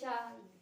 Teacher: दंतीय सा हमारे दांतों को स्पर्श करते हुए। इनका हमें उच्चारण करते समय ये ध्यान रखना होता है कि हमारी जिह्वा किस स्थान विशेष को स्पर्श कर रही है, तो हम उसी हिसाब से इसका उच्चारण करते हैं।